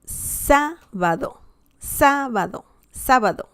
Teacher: now we can see that the stress is on the third to last syllable